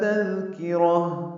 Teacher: ہا الف مدہ ہے، 2 حرکات لمبا کریں گے، ہا اقصی حلق سے ادا کریں گے. تذکرہ میں دال نرمی سے پڑھا جائے گا، کاف باریک ہے